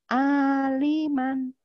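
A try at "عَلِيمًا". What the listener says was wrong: Li-nya panjang.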